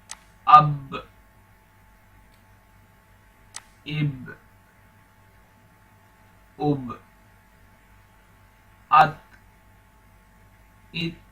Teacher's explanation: ٹھیک ہے، ابھی دیکھیں یہاں پر اس پر جزم ہے تو ہم قلقلہ کر کے اس کو پڑھیں گے، یعنی جھٹکا دے کے پڑھیں گے۔ تو ملا کے پڑھنا ہے الف کو با کے ساتھ۔